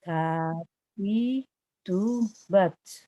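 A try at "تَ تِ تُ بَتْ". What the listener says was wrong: S-nya, hamsnya jangan terlalu banyak, sedikit saja.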